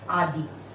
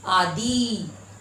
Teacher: और यहाँ पर आ द में बड़ी आदि। दी उच्चारण यहाँ पर खींच कर हो रहा